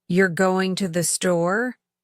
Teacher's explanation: For example, the sentence, "You're going to the store?" can have different meanings based on intonation. If your voice rises at the end, it becomes a question. If it stays level, it sounds more like a statement.